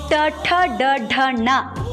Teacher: ಆಳದಲ್ಲಿ ತಡೆ ಹಿಡಿತೀವಿ ನಾಲ್ಗೆ ತುದಿನ ಮುಂಭಾಗಕ್ಕೆ ಒತ್ತಿ ಅಲ್ಲಿನ ಉಸರನ್ನ ಹಿಡಿದು ಚೇತೀವಿ ನಾಲಿಗೆ ಹೊರಳಿಸಿ ತುದಿನ ಒಳಗೊತ್ತಿ ಅಲ್ಲಿ ಉಸಿರು ಹಿಡಿದು